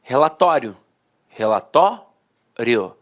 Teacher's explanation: a penúltima sílaba era sílaba mais forte e a última de fato perdi a força Então os dicionários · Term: paroxítona terminada em ditongo